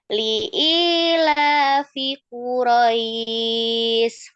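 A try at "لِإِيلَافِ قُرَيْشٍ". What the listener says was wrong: Shin, huruf shinnya Quraisy. Ya, tengah lidah.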